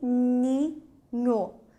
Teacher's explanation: Em algumas transcrições fonéticas admite-se aqui uma certa nasalização desse I